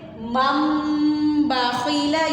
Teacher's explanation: اقلاب میں آپ نے نون کی آواز کو پڑھنا ہی نہیں ہے، وہاں پر آپ نے میم کی آواز کو پڑھنا ہے، ٹھیک ہے. نون ساکن یا تنوین کے بعد حرف با آئے تو وہاں پر اقلاب ہوگا.